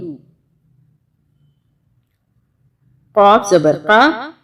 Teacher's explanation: अभी मोटा कॉफ है, इसको कॉफ पढ़ना है, काफ नहीं पढ़ना, बारीक नहीं पढ़ना, मोटा पढ़ना